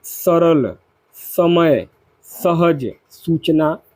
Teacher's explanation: स जो शब्द है ये आपका स दंत इसमें हमारी जिह्वा दांतों के निचले भाग को स्पर्श करती है, जैसे कि सरल, समय, सहज, सूचना आदि।